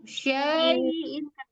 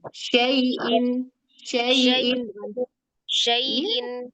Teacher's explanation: Jadi i-nya jangan panjang jangan jadi mad. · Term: harfulin